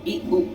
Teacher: इनके उच्चारण में के समय मुख द्वार लगभग बंद रहता है। देखिए आप बोलेंगे ना जैसे ई उ, तो मुख द्वार मतलब हल्का, बहुत हल्का सा खुला हुआ होगा। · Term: समृत स्वर